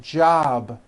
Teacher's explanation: job ends in a B, which is a voiced sound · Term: voiced B ending